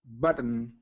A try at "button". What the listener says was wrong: Okay, so I heard you actually pronounce the T there. So so kind of stop the T there. So button.